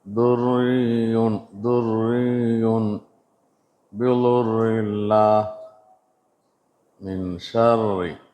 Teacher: ஷது செய்யப்பட்ட ராவில் கஸ்ரா அல்லது கஸ்ரத்தன் இருந்தால் தர்கீக்காக மிருதுவாக ஓத வேண்டும்.